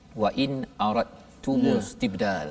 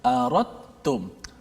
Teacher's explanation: Kalau kita sebut aradtum wa in aradtum, tak ada pun huruf dal kat situ, tak bunyi pun dari sebutan huruf dal, tapi dekat tulisan ada huruf dal. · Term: idgham mutajanisain